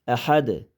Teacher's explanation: Aha o'qisa bo'lmaydi. Aha dalni sakin qilib to'xtasak bu yerda qalqala qilamiz